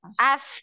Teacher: Lidahnya di gigi seri atas ya. Nempel di gigi seri atas, ujung lidahnya.